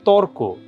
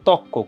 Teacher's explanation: আর আধুনিক চলিত বাংলায় অনেক ক্ষেত্রে রকার লোপ পায় এবং পরবর্তী ব্যঞ্জনটা দ্বিত্ব হয়।